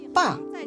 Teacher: And the 4th tone falls.